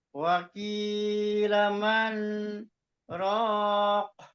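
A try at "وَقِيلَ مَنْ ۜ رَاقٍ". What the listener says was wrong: dihilangkan dulu, Pak. Dihilangkan dulu, di stop dulu suaranya. Tapi jangan tarik nafas kan. Apa namanya saktah Wakilaman. di stop. Wakilaman. Jadi bukan bukan nunnya dilamain, bukan. Di stop dulu.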